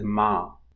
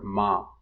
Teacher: So instead of saying I, you drop the off glide, replace it with some length by adding length to the head and compensate for the deletion. So I becomes ah. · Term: smoothing